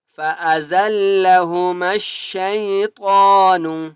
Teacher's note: طا کو موٹا کریں گے اور طا کو ایک الف کی مقدار کھینچ کر پڑھیں گے